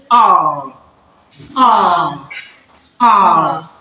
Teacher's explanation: You produce this by shrinking or bringing your lips together a bit to produce the long sound ah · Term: long vowel sound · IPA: /ɑ:/